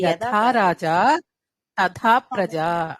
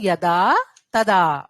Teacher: అది యథా థ కి మహాప్రాణం ఉంటుంది